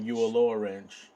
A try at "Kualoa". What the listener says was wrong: No, no, it's a K. Kualoa Ranch.